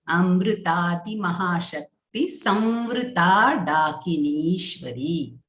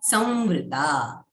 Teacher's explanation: So we are going to say here Sanyuta. Again, whenever the anuswara is followed by vakaraha, then we are going to say the nasal halanta va.